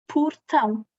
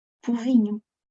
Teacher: O O passa a U. Em posição átona.